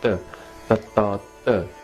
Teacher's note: Here the tongue is not like English T, tongue is flat against the roof of your mouth.